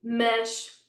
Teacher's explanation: we've got a sh at the end there because we learned that an S at the end, that has to be a sh